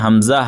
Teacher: हमजा हलक के नीचे वाले हिस्से से अदा होते हैं। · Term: हुरूफ-ए- हलकिया